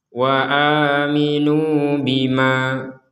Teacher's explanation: Misalkan kita berhenti di bima, maka menjadi 2 harokat.